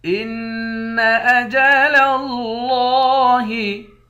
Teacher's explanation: إِلَىٰ أَجَلٍ مُّسَمًّى إِنَّ أَجَلَ اللَّهِ، حمزے کو نون مشدد کے ساتھ ملا کر غنہ کریں گے، لام کو لفظ اللہ کے لام کے ساتھ ملا کر موٹا پڑھیں گے اور 1 الف کے مقدار کھینچ کر بھی پڑھیں گے۔